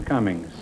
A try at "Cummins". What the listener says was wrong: No, he's C-U-M-M-I-N-G-S.